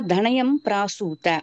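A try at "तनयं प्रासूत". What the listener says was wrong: தனயம். நீங்க வந்து தாவ வந்து தா சொல்லக்கூடாது. சரியா?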